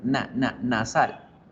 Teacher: la n también es nasal pero esta es nasal alveolar qué quiere decir la punta de la lengua toca ahí donde